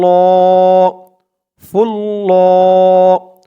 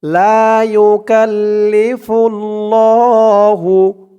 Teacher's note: খারা জবর দিয়ে এক আলিফ টান দিয়ে পড়তে হবে